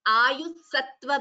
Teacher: Instead of visarga, half s is included.